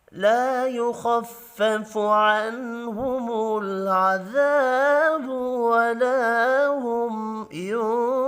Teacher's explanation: نون ساکن کے بعد ہا ہے، اظہار حلقی ہوگا، غنہ نہیں ہوگا